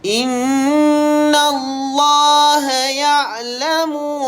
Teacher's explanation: lafzul jalalah dibaca dengan nipis